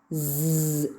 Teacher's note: So the active articulator is the tip of the tongue and the passive articulator is the teeth ridge.